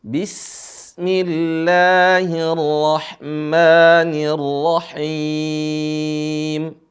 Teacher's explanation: rahim perhatikan Sin yang sukun Sin yang mati bismillah bukan Bismillahi bukan Qalqalah tapi suaranya dialirin karena huruf Sin termasuk huruf rakhawah